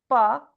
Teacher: I'm making an extra effort to have no aspiration on ba.